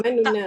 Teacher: Nu tu laju. 1/3 harakat. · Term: Raum